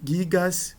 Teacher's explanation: Com o acréscimo do sigma, a dental cai, a nasal cai, e para compensar a queda da nasal, o alfa é alongado. Então, gigas com alfa longo.